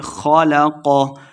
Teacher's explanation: خ اور قاف دونوں کو موٹا پڑھنا ہے